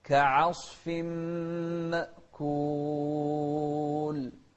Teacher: شوف العين مرققة وبعدها الصاد مفخمة